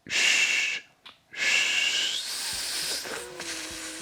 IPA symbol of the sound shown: ʃ